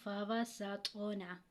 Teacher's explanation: اب سین کو جب ادا کریں گے تو سیٹی کی آواز آئے گی اور طا جو ہے یہ حروف قلقلہ میں سے اور طا ساکن ہے، جس پر یہ جزم کا نشان ہو اس کو ہم ساکن کہتے ہیں، یہ حروف قلقلہ میں سے ہے۔